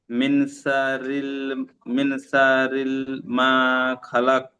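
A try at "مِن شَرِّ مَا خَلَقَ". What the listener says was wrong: গুন্না হবে, শাররিমা। হ্যাঁ, এখানে ওই শিনটা সিনের মতো হয়ে যাচ্ছে, ওটা আপনি পরে প্র্যাকটিস করে নেবেন। মিন শাররিমা খালাক।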